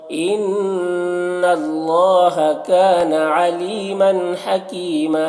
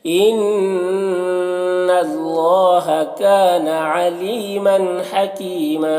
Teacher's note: इन्ना नून मुशद्दद गुन्ना होगा, अल्लाह के लाम को ऊपर पढ़ेंगे। काना में अलिफ मद्दा है, अली यहाँ पर या मद्दा है और मन की तनवीन में इजहार हो रहा है।